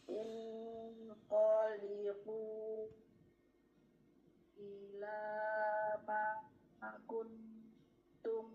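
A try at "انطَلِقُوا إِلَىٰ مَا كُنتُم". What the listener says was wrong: Nunnya nggak kedengeran. Intoliqu, ulangi. Bukan in qaliqu.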